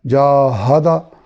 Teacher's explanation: ہا حلق کے نچلے حصے سے جو سینے کی طرف ہے وہاں سے ادا ہوگا